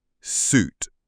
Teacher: And yes, I said suit, not sew, suit. We pronounce suit with the long oo as in boot.